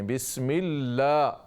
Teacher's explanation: لام کو لمبا کریں، بسم اللہ پورا الف